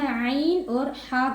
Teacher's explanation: عین اور ہا حلق کے درمیان والے حصے سے ادا ہوں گے